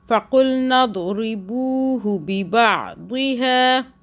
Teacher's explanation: دھیان سے پڑھنا ہے، ہو کو نہیں کھینچنا